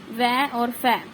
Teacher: इन वर्णों का उच्चारण स्थान ऊपर के दांत ऊपर के हमारे दांत और नीचे के होठ से होता है ऊपर के दांत से होगा और नीचे के होठ से होगा